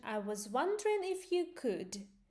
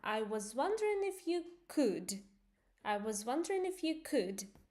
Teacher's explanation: You go up and then at the end you go down.